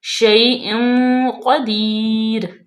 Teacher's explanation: تنوین کے بعد قاف آ گیا تو یہ اخفاء کا قاعدہ لاگو ہوگا اور یہاں پہ ہم غنہ کریں گے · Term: اخفاء کا غنہ